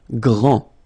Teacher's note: final D not pronounced, okay? GR, gr, gr, gr, and then the nasal en, grand, okay?